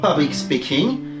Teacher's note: Public est accentué en première avec un accent primaire, et speaking est accentué en première avec un accent secondaire